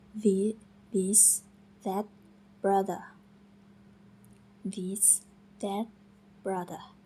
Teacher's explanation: Sekarang kita beralih ke bunyi deh. Posisi lidah itu hampir sama seperti teh, tetapi kali ini kita menggunakan suara dari pita suara kita.